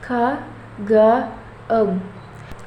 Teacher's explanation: These consonant sounds are produced when the back of the tongue touches the soft palate, the velum